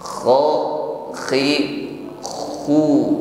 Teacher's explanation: ada gesekan antara akar lidah dengan dinding-dinding tenggorokan sehingga ada suara ngorok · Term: huruf kha